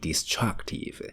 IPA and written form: dɪˋstrʌktɪv (destructive)